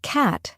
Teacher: the word cat has a broader a sound compared to British English